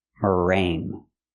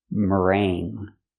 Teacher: So there's no g. It's in your nose. Because you have the NG together here. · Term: nasal sound